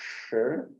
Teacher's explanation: the tongue is retroflex, is bending inward. And the more you bend it, the more you will get that warmness of the sound. Like the other sibilants, like S and Sh, are quite thin and piercing.